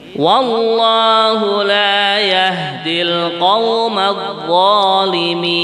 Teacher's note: Kalau dzal lesan datar begini. Kalau dha, nah ini pangkal lidah ini naik ke atas, kayak melengkung begitu nggih, kurang lebihnya nggih.